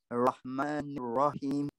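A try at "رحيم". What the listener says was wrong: Yeah, just need to make it sharper, okay? You need to get the squeeze a bit more. Need a stronger squeeze, okay?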